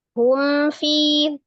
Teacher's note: mimnya sifatnya tawasud, maka harus dialirkan sebagian, ditawasudkan, dibainahkan ya. Hum fi, tidak hum fi, itu namanya tertahan. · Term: mim sukun